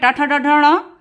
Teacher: टा वर्ग में ट ठ ड ढ ण ये मूर्धन्य से बोले जाते हैं